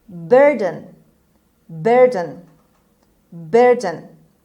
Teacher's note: The stress is on B on the first syllable. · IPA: /ˈbɜːrdn/